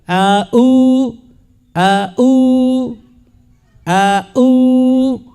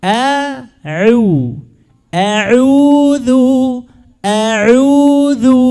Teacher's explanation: الأول همزة نعم، لكن الثاني عين ليست همزة